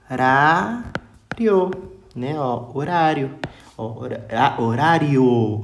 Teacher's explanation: né de um som mais fraco para um som mais forte em termos fonéticos sai de uma semivogal e vai para uma vogal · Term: ditongo crescente